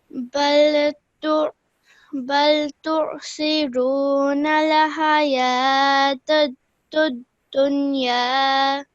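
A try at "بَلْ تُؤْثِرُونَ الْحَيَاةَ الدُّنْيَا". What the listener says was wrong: Just be careful over here. I heard you say an ayn sound. This is actually simply a hamza. So hamza produces the same sound as an alif.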